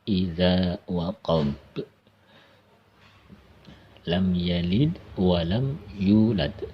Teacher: cara membacanya yaitu membal atau mantul ketika dia mati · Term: qalqalah